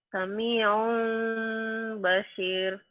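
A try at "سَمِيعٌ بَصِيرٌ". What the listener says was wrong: Ya kayak bindeng dikit ya.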